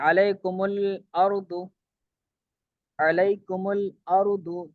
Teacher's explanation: پہلا ساکن جمع کا میم ہو تو اسے دمہ دیں گے، دمہ مطلب پیش دیں گے